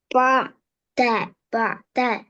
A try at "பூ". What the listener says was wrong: பா அல்ல பூ.